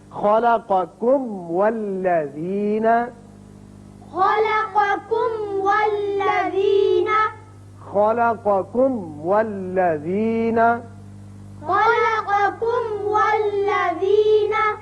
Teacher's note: میم کا اچھی طرح اظہار کیجئے، پھر واو پر ہونٹ کو گول کیجئے، اس لیے واو ادا ہوگا۔ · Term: میم کا اظہار